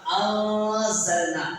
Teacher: அந்த நூனே சாக்கினை மூக்கால மறைச்சு ஓதணும். அதாவது குன்னா செஞ்சு ஓதணும். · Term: மூனே சாக்கின இஃபா